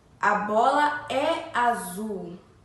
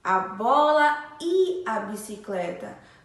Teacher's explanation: Sem o acento agudo, a letrinha E tem o som diferente, tem o som de I